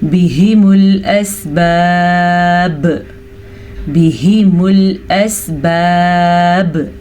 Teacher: جب با ساکن ہوا تو با پہ قلقلہ ہوگا ایسا تب ہوتا ہے جب حروف قلقلہ کے اوپر جزم آ جائے.